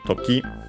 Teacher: accent on the last syllable. Time as in moment, occasion also.